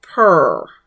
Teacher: the ruler's title was pronounced closer to per, without an F or a voiced PH sound